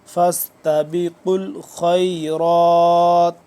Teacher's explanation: وَلِكُلٍّ وِجْهَةٌ، وَلِكُلٍّ وِجْهَةٌ هُوَ مُوَلِّيهَا فاستبقوا الخيرات فاستبقوا فاس سی ٹی کے بعد فاستبقوا الخيرات، قاف کو موٹا، خا بھی موٹا، اور را کھڑا زبر را پر کر کے پڑھیں گے اور لمبا کریں گے، کھڑا زبر ہے اس پہ.